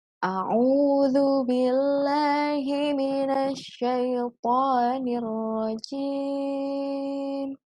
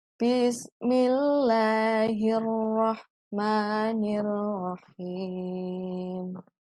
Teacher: Naik itu untuk ta'awud, kemudian turun itu untuk basmalah. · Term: irama naik dan turun